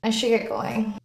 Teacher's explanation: The nasal NG sound in going is produced with the back of the tongue rather than an N with the tip of the tongue. The G is not pronounced.